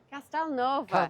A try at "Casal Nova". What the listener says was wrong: No, not Castel, Casal. Casal Nova.